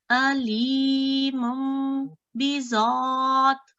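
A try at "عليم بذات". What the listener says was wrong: نہیں اس کے علیمم پہ آواز کو ٹھہرائیں کیونکہ 2 سیکنڈ ہم نے غنہ کرنا ہے تو اس کو 2 سیکنڈ کے لیے کیجئے یہاں آواز کو.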